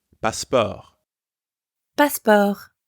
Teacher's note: The pronunciation is almost the same as in English, but you don't pronounce the T sound at the end